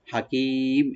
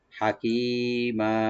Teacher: আলিফ বলা দুই জবর, লাস্ট আলিফ আছে, এখানে আমরা এক আলিফ টেনে ছেড়ে দেব